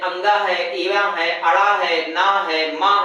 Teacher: इनके उच्चारण में ध्वनि नाक से निकलती है इसलिए इन्हे हम नासिक कहते हैं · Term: नासिक की ध्वनियां